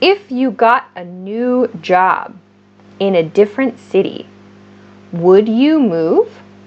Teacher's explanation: we can make these kinds of questions just with our voice using upward intonation